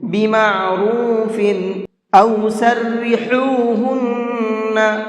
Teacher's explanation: ہا کا ساؤنڈ تھوڑا سا باریک ہوتا ہے، اور یہ حلق کے درمیانی حصے سے نکلتا ہے، یعنی حلق کے مڈل سے نکلتا ہے۔